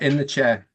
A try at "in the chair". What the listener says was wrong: It's not in the chair, okay? It's in the chair, okay? There's no R, okay?